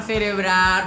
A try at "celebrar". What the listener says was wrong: Celebrar con R, pronunciar bien.